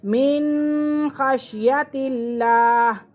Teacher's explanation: لفظ اللہ کی لام سے پہلے زیر آ گیا تو لفظ اللہ کی لام کو باریک پڑھیں گے